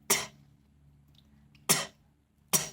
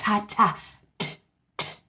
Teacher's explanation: letter T says, t, t, t, not ta, ta. The tip of the tongue.